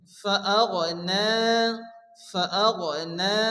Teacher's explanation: ফা আসে এখানে এক আলিফ গুণ করে পড়তে হবে আইলান ফাআগনা নুনের উপরে খারাজ জবর এগারি পরিমাণ টান দিয়ে পড়তে হবে